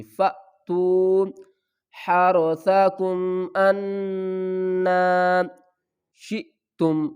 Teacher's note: فأتو اور شئتم دونوں کو ہم جھٹکے کے ساتھ پڑھیں گے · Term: حمزہ